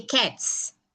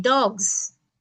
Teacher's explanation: the plural s for cats is coming with a s sound, but for dogs, you get the z sound.